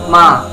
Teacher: Makhorijul huruf mim terletak pada dua perut bibir bagian tengah.